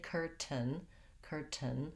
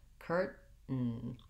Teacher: They're not going to say curtain, curtain with a pronounced T sound, or curtain with a flap T. It's going to be a stop T, which means you won't really hear the T sound. But I can't leave it out entirely.